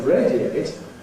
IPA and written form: ˈreɪdieɪt (radiate)